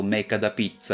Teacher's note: In Italian words almost never end in consonants, so it’s common for Italians to insert a weak schwa vowel when pronouncing words that do